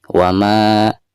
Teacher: Taurat ada baik yang pertama hai ketika kita membaca uama isinya dipanjangkan dua harokat karena dihukumi Mad Thobi'i ada harkat patah berhadapan dengan Alif